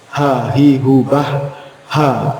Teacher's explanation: Kalau hak itu betul-betul lepas, tidak nyangkut yang kerongkongan